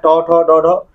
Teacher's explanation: इनका उच्चारण जो है आपका मुर्धा से होगा